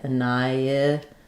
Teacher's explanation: So the H is silent, and then we have an I, annihilate. Because we're moving from the I to the I, we have a little bit of a y sound linking the I to the I